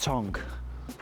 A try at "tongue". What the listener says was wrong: Tongue. Tongue. Tongue. Tongue. Tongue. You're pronouncing it phonetically. It's not how it's actually spelled. No, it's not, it's tongue.